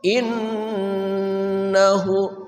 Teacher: Nun denggung karena bertasydid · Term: Nun gunah musyadadah